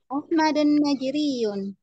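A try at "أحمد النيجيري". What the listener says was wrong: Enggak tanwin ya. Ahmadun Naijeriyu.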